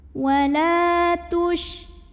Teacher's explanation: La mad tabi'i zahiri karena ada alif yang didahului baris fathah. Maka cara bacanya lam ini kita panjangkan 2 harokat